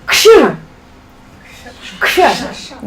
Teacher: K and then Sh. Put them together without any gap in the middle.